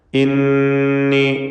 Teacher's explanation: ഇന്നി ശദ്ദുള്ള നൂനിനെ മണിക്കണം